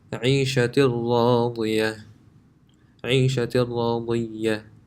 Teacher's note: This tanween, the noon, if it was by itself, it would be pronounced عيشة, but that noon sound is completely gone and it's connected to the ra